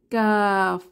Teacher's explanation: কাফ জিহবার গোড়া থেকে একটু সামনে আগিয়ে তার বরাবর উপরের তালুর সাথে লাগিয়ে উচ্চারিত হয়